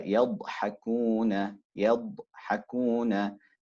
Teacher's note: Then we have the extension or the elongation, al-istitala, the extension or elongation of the sound in pronouncing the letter dad, carrying a sukoon, right? The sound will start from the makhraj of dad, reaching the makhraj of lam, utilizing the whole upper palate. The sound continues upon articulation as a result of the letter dad being a ar-rakhawa, a continuation of sound. · even though you're stopping as a sukoon, you still hear the continuation of the sound. So it's elongated, right?